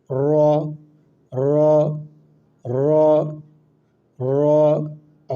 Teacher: র হচ্ছে জিহ্বার আগা, জিহ্বার উল্টা পিঠ। র হচ্ছে জিহ্বার উল্টা পিঠ উপরের সাথে লাগাইয়া।